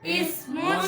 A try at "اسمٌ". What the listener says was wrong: سا پہ سیٹی نہ آئے بھائی. اسمون. اب وقف کریں گے تو اسم.